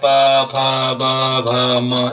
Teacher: ठीक है, और इसी तरह के प बड़ा वर्ग है, प, फ, ब, भ, म, ये जो है ओष्ठ व्यंजन इनको हम बोलते हैं। ये जो है इनकी जो ध्वनि है ओंठों की सहायता से निकलती है हमारी, इनको हम क्या बोलते हैं, ओष्ठ व्यंजन बोलते हैं।